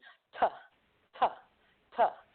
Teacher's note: The first letter, T, is a stop. Disrupts airflow. Quick, sharp, staccato.